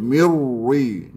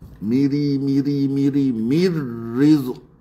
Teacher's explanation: Maka ra ini adalah ra nipis. Jangan kita baca dengan muncung mulut.